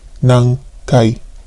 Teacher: So notice that the N sound becomes NG sound because it is followed by a K sound.